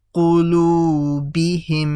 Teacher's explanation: So I've done a ghunna over here because the meme over here has a shadda, isn't it? So these two memes merge together, making a ghunna